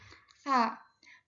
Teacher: Sa mahmus dia masuknya ke ee tidak bersuara atau tidak adanya getaran.